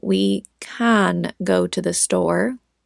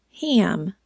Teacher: We have an and am. N and M are nasally sounds. Their sound comes out our nose. So they automatically make our a super whiny and nasely.